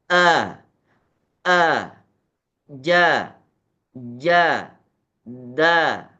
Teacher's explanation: huruf syiddah ketika kita lafalkan itu seakan-akan beratnya suara hampir kepada dua harakat